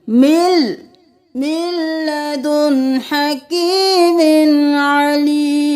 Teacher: यहाँ पर मिन नहीं करेंगे, मीम को लाम के साथ मिलाएंगे